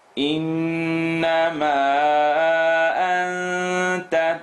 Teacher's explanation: We end here with noon shadda, full nasal sound.